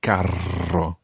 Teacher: I'm obviously over-rolling my R's here. I'm making a quadruple R rather than a double R with carro.